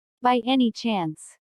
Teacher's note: notice the rising intonation which is used in yes no questions to confirm that something is true